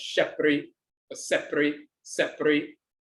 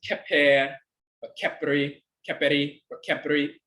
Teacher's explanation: in the Coptic dialect, it's the sh sound. In the older dialect, it's the ka sound.